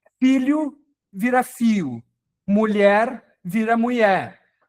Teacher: aqui ele trocou, foi hh eh outro fenômeno bastante comum, pessoal, na linguagem na linguagem popular, a redução do dígrafo LH para um ditongo